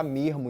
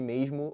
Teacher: Esse R carioca muitas vezes pode até substituir o S chiado. Você pode encontrar um carioca que fala mermo em vez de mesmo, ou Sim.